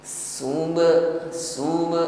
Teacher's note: pantulkan pada huruf ba yang sukun